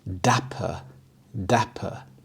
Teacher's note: The stress is on the first syllable, dapper.